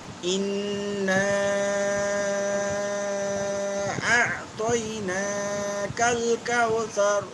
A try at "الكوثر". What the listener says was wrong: كاو এই যে কাও আছে না কাও এটাকে চেষ্টা করবেন ওয়াও এর উচ্চারণটা যেন নরম থাকে আর একটু নরম করা যেতে পারে কাউসর كوثر كوثر اعطيناك الكوثر كوثر কাফটা শক্ত হবে ঠিক আছে ওয়াও এর উচ্চারণটা আরেকটু নরম করতে পারলে আরো ভালো হবে আবার ইন্না